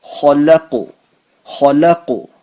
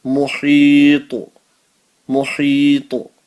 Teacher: if you're stopping at the end of a verse and it becomes like a qaf, ta, ba, jim, dal, sakin, then also we make an echo sound